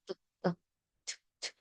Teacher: Unvoiced. Sa manner of articulation, ito po ay plosives. May bugah ng hangin.